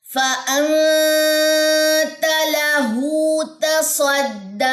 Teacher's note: اس کے بعد نون ساکن کے بعد یہاں پہ کیا آ رہا ہے، تا آ رہا ہے، تو اخفا کون سا ہے، اخفا حقیقی ہے، اور یہاں پہ غنہ ہوگا. لہو الٹا پیش ہے، یہ جو ہے یہ 2 سیکنڈ یہاں پہ آپ اس کو ہو کو لمبا کریں گے